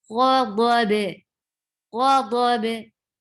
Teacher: Do, when we are stopping here, we will connect this dot with ba, and there will be qalqa on ba.